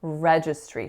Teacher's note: the winning syllable in this word is the first, registry.